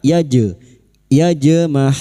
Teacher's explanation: jim yang mati asli di tengah kalimat qalqalah sugra. Jangan lupa dipantulkan